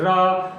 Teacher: रा को बोलते हैं तो ऐसे लगता है जैसे कि जीभ कई बार कंपन कर रही, कई बार ऊपर नीचे हो रही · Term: प्रकंपित